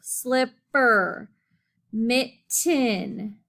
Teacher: letters in the middle and they have two syllables so um the first syllable sound of each word is stressed